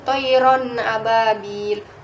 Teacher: Kata kedua itu thayron ababil, hukum bacaannya itu izhar halki karena tanwin bertemu dengan huruf alif, dibaca jelas dan tidak mendengung sama sekali